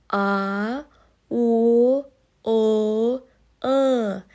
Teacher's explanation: Дауысты дыбыстар жуан және жіңішке болып екі топқа бөлінеді. Жуан дауысты дыбыс тілдің арты көтеріліп, кең ашылып айтылатын дыбыстар.